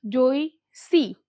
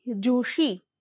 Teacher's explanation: આધુનિક ગુજરાતીમાં તાલવ્ય સંઘર્ષી વ્યંજન ષ સ્વતંત્ર રીતે પ્રયોજાતો થયો છે દંત્ય સંઘર્ષી ધ્વનિ સ ની સ્થાને ઈ એ અને ય જેવા તાલવ્ય ધ્વનિ ઉચ્ચારાતા હોય તે સંજોગોમાં સ ધ્વનિ નું તાલવ્ય સંઘર્ષી ધ્વનિ ષ માં પરિવર્તન થાય છે